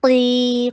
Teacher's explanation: قاف کو ہیوی کیجیے اور ٹو حرکہ لانگ کیجیے